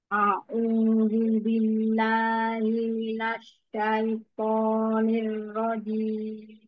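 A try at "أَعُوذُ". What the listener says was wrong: yang pertama Hamzah bukan Ain Ain itu yang kedua Jangan dibalik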